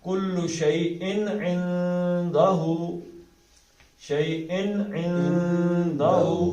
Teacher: تو اس کا اظہار ہوگا، کل شیء نہیں ہوگا بلکہ کل شیء عندہ. اب یہ نون کو ناک سے ادا کرنا، عندہ کا نون جو ہے زبان ہوا میں رہے